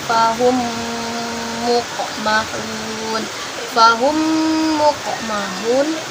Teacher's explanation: mim mati bertemu dengan mim, itu dibaca sebanyak 2 harkat dan dibaca dengung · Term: idgham mimi